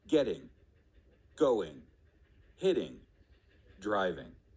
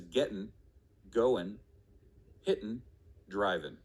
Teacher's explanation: final sounds in those words should be the g sound however when spoken quickly or in conversation the final g sound gets deleted those words would then be pronounced as gettin goin hidden driven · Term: g deletion, G deletion